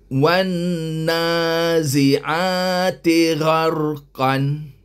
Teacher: alif lam Nun sabdu atas Wan wajibul ghunah wajib kita dengungkan wajib kita dengungkan sekadar dua harakat